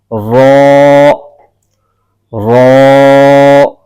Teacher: जुबान की नोक ऊपर उठकर तालू को लगेगी तो वहां से यह हर्फ अदा होता है · زبان کی نوک اوپر اٹھ کر تالو کو لگے گی، تو وہاں سے یہ حرف ادا ہوتا ہے